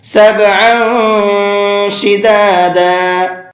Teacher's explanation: تنوین کی آواز کو ناک میں چھپا کر کے پڑھیں گے، اخفا کر کے پڑھیں گے۔